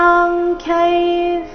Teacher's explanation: ಇಲ್ಲಿ ಯ ಮೇಲೆ ಆಘಾತ